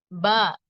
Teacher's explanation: இரு உதடுகளின் ஈரமான பகுதி உள்பக்கம் சேர்ந்து பிரியும் போது ஏற்படுகிறது